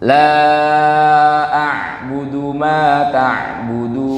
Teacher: huruf ain ini Bapak Ibu agak ditekan ya. Jadi dia bukan di hidung.